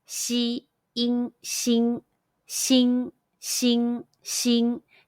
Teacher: combine the initial xi, the final in, and the high pitch first tone all together.